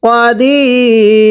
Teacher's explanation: এই রয়ের উপর দুই পেশকে বাদ দিব ওয়াকফের কারণে এবং ওয়াকফের সময় তিন আলিফ টান দিব